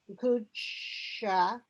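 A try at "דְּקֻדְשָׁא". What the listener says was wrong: It's not really a blend here. You hear the de. De ku de sha.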